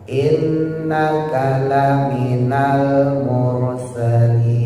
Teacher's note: sinnya taruh bawah di antara gusi bawah sama gigi bawah